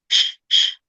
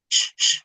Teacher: Jadi dia punya sifat tafashi khusus ya. Huruf lain nggak punya sifat ini nih, cuma shin doang, nyebar.